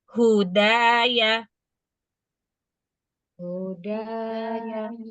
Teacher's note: Nah, setelah ini kita perhatikan ada huruf dal yang berar rakat fathah lalu diikuti alif. Maka dalnya harus dibaca panjang. dua harakat.